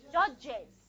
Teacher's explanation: You're going to have a schwa plus a z sound.